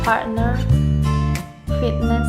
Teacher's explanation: The T is pronounced as a glottal stop when it is between a vowel N or R, including all R control vowels, and followed by N, including a syllabic N, M, or non-syllabic I.